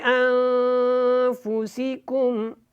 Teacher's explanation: نون ساکن کے بعد یہاں پہ فا ہے، حروف اخفا میں سے، تو آپ نے یہاں پہ اخفا کرنا ہے